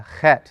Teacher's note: this letter you need a little more flume in your throat you're going to kind of spit it out a little bit in the back of your throat in that guttural area